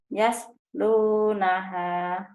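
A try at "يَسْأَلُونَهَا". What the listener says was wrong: Yas launaha. Yas lau, bukan yas lunaha. Yas launaha.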